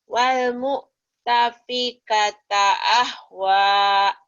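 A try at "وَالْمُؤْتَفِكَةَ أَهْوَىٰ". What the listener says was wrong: Iya, tinggal latihan hadadanya nggak keluar nih. Walmu'tafikata ahwa. Latihannya gini ya. Alhaakumut. Alhaakumut. Alhaakumut takasur. Kemudian alhaakumut alha. Hadada ya. Alhaakumut. Gitu. ahwa.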